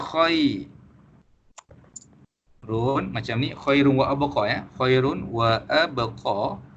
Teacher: Kita kena tukar huruf nun tadi tu kepada huruf waw. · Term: idgham bi gunnah